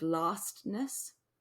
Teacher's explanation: something that's really difficult to say without a glottal stop